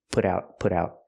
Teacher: We hear the T in put out as a fast D